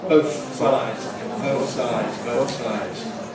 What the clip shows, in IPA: ˈbəʊθ ˈsaɪdz